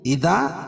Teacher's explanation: الف سے پہلے ذال کے اوپر زبر ہے تو الف مدہ ہوگا, اس کو ایک الف کے برابر کھینچ کے پڑھیں گے